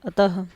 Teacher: इसे विसर्ग को हम ह की तरह उच्चारण करके पढ़ते हैं